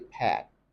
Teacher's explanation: It's open, but it's not so open like you have in British English. So they say pat, Americans say pat, pat, pat.